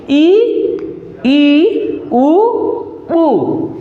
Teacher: समवृत्त मतलब हो मुख सबसे कम खुलता है, जैसे ई ऊ ऊ।